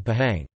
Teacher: H is pronounced clearly between like vowels